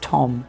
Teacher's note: There's generally less jaw drop in British English.